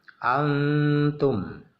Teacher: jadi ada setengah izhar, setengah ikhfa. Dengungnya sedikit. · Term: ikhfa aqrab